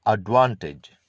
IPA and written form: ədˈvɑːntɪdʒ (advantage)